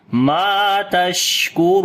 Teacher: Ra we read in heavy sound, and also we long due to waw madda. And when we stop on this place, so it will be madde aris, which we long almost 2 alif.